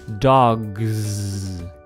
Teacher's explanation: When it follows a voiced sound, like the g in dogs, it stays voiced.